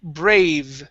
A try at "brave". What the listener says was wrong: You're pronouncing a B, saying brave. Okay